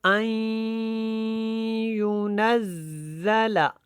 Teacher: حمزہ کو یا کے ساتھ ملایا اور یا جو ہے اس کے اوپر شد تھی تو اس کو پختگی کے ساتھ اور پھر ہم نے اس کو غنہ کے ساتھ ادا کیا